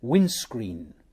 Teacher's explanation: the middle consonant of three adjacent consonants is dropped